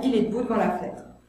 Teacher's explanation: dans « Il est debout devant la fenêtre », là je fais tomber tous les E muets. J'aurais pu dire « Il est debout devant la fenêtre », c'est plus formel et plus clair, mais à l'oral, on dit en général « il est debout devant la fenêtre ». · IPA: [ə]